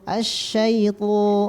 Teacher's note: pangkal lidahnya diangkat supaya tebal. Syaitu, dan tidak monyong ya ketika fathah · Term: ditebalkan